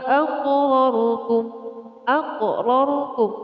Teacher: huruf qaf ini adalah huruf qalqalah. Harus dibaca dengan memantul.